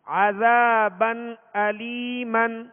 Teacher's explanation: عذا زال کے آگے الف ہے، الف مدہ ہے، 1 الف کی مقدار کھینچ کر ادا کریں گے